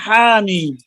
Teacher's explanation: اسی طرح آپ دیکھتے ہیں یہ جب ہم پڑھتے ہیں یہ حروف مقطعات تو ہم پڑھتے ہیں حامیم، تو ہا کو زیادہ لمبا نہیں کرتے کیونکہ وہ دو حرفی حرف ہے